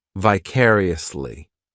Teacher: The third syllable, it's like that letter I just has that E sound, and the fourth syllable has the schwa